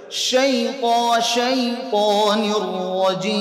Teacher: শিনের উচ্চারণের মধ্যে তাফাশি, মুখটা ভরে যাবে